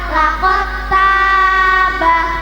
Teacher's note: Setiap dal sukun bertemu tak, maka dalnya hilang menjadi tak tasdid, dinamakan bacaan idgham mutajannisain.